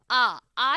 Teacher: आ जब हम बोलते हैं तो पूरा मुख द्वार खुलता है। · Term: विवृत